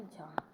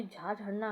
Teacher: तालव्य महाप्राण घोष वर्ण का उदाहरण है, जैसे कि झा